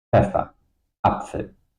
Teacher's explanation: PF all the time pronounced together.